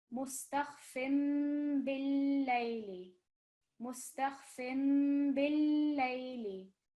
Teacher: the noon sound, which might be produced by the noon sakin or the tanween, it is changed into a meme sound. So we take the sound of the small meme maqluba. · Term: iqlab